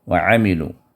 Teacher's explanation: الا الذین آمنوا وعملوا الصالحات، وعملوا الصالحات، وعملوا، عین جو ہے عین کو دبا کر وسط حلق سے نکالیے